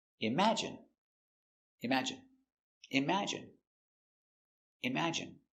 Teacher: i m im a ima j j strong sound j j j image i imagine n imagine Imagine, stress on the second syllable